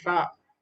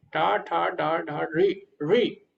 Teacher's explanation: जहां पे आपकी जीवा टच हो रही है टा ठा डाडा बोलते समय, वहां पे जो रा निकल रहा है टा ठा डाडा रा, री री। रा में क्या होता है, जीवा पूरी टच हो जाती है ऊपर रा, लेकिन री में पूरी तरह टच नहीं हो पाती, वो बीच में रहती है